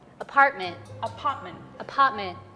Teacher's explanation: you cut it off at the back of your throat